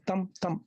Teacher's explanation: So this could be spondee actually. Spondee meaning a foot of 2 syllables, but both of them stressed.